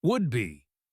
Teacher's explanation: the D in would likely linked to the B in be, sounding like would be.